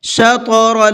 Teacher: اس طا کے اندر بھی قلقلہ کریں گے، آواز کو ہلکا سا ڈبل کر کے پڑھیں گے، اس لیے کہ طا بھی حروف قلقلہ میں سے ہے۔